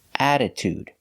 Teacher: First, we have double T between vowels. The rule says in American pronunciation, we should pronounce this with a D sound, a fast D sound.